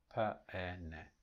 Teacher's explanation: So you just go here, and you look, this is the first sound. The second sound is the open mid front unrounded vowel e, and then the third sound is the voiced alveolar nasal n.